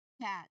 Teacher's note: strong, sharp puff of air from the back of your mouth. Remember that the back of your tongue, it blocks the air completely for a moment. · the back of your tongue, it blocks the air completely for a moment. So this sound is really unvoiced.